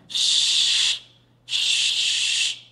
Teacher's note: tengah lidah bertemu dengan langit-langit. Jadi bunyi sukunnya sh. Nah, suaranya menyebar di rongga mulut. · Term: huruf shin